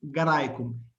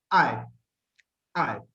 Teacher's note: no es una I cerrada como la de nuestro diptongo, sino que es más abierta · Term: diptongo AE